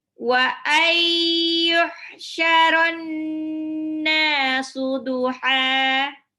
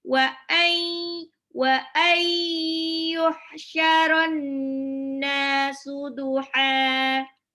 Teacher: Wa ay, nun sukun ketemu ya-nya. Nunnya lebur ke huruf ya, ditahan 2-3 harokat. Itu ada efek gunnahnya. Jadi kita keluar itu dari rongga hidung yang benar.